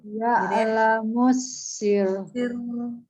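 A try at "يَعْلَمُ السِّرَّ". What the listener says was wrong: Nah, tahan sedikit. Sir. 2 kali. Sir. Ya, tahan. Jadi dia 2 kali. Sir. Jadi jangan dibaca putus langsung sir. Kalau gitu aja dia ro-nya nggak tasdid.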